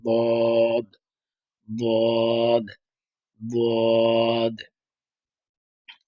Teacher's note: এক সাইডে জিহ্বার গোড়ার একটা কিনারা একটা যেকোনো এক পাশে লাগিয়ে বললাম